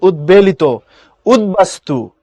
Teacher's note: পড়ার সময় উৎ পড়ি না, পড়ার সময় উদ পড়ি, উদ দ দিয়ে পড়ি